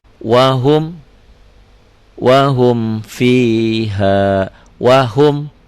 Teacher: Karena mim dan fa itu ya, kalau kita cermati, mim mati dengan fa dengan waw itu bunyinya sama-sama bibir di mim waw fa. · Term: idhar syafawi